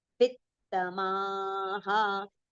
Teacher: V is followed by two ths, right? One is half, one is complete. So both the ths should be heard clearly.